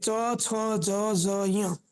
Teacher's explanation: આ જે 5 અક્ષર છે એનું ઉચ્ચારણ તાળવામાંથી થાય, એટલે તાલવ્ય. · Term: તાલવ્ય વર્ણ